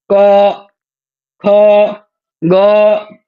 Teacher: क ख ग कंठ से निकलता है। वो ध्वनि सीधे कंठ से निकलती है।